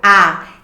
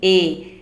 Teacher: A. Se eu vou dizer E, a minha boca já fica mais fechadinha